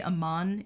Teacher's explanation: amman is the only word where the emphasis goes on the second syllable it's a very rare exception typically like in arda it's arda